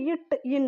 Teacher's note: நாவின் நுனி அன்னத்தின் நுனியை பொருந்துவதால் பிறக்கிறது